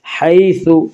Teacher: یالین کو نرم آواز کے ساتھ جلدی پڑھیں گے